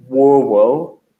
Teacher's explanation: It becomes, if you listen, it gets towards rural, because if you have a very, very soft R, it sounds like a W